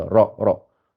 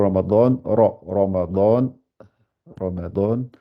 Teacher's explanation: Elle est toujours gonflée. Elle est toujours, le ra doit être gonflé toujours.